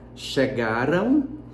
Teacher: Então, se fosse para ler do jeito que escreve, a gente leria chegarão. Porém, na pronúncia, esse an ou esse ran do final vira ão ou rão. Então, chegaram ou, se for futuro, chegarão. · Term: glide